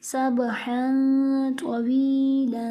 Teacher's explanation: یہاں پر تنوین کے بعد تو حروف اخفاء میں سے اس لیے یہاں غنہ کر کے پڑھیں گے. نیز یہاں پر یا مد کا قاعدہ ہو رہا ہے اور آگے تنوین ہو رہی ہے.